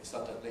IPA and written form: ˈsʌdənli (suddenly)